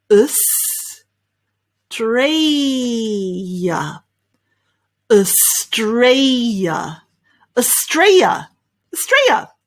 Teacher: That's how the Australians pronounce it, okay? We really, erase some of those syllables and just make 3 syllables there